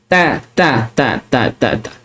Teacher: Makhraj huruf ta, hujung lidah.